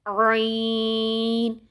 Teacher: ہمارا جو حلق کا بیچ والا حصہ ہے، جو کھردری سی ہڈی محسوس ہو رہی ہے جہاں سے ہا ادا ہوتا ہے، وہیں سے سیم عین بھی ادا ہوگا